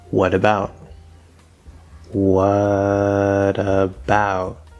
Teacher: we connect over that T, but it becomes a D sound, consonant to vowel.